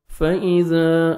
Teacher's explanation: الف مدہ 1 سیکنڈ آپ نے زال کو کھینچنا ہے۔